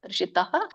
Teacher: ತೋ ಇರೋದು ವಿಸರ್ಗಾಗಿ ತಹ ಆಗುತ್ತೆ